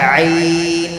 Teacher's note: گلے کے بیچ والے حصے سے نکلتا ہے۔ عین کا مخرج گلے کے بیچ والے، گلے کے 3 حصے ہیں نا، باہر کا، بیچ کا اور اندر کا، بیچ والے حصے سے عین۔